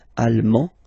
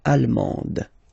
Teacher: you don't pronounce the final D, but then you pronounce it here for the feminine form